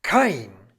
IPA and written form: kaɪ̯n (kein)